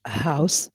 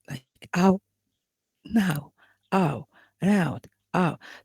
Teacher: when I say house, we have ow. We have a and oo, ow. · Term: diphthong